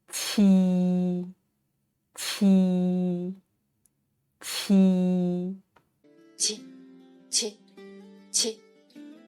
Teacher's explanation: tongue to the back of the lower teeth but this time force the air out and this sound is aspirated just as in the English word cheer